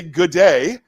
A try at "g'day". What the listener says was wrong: Come on. Yeah, no, really smash them together. It's g'day.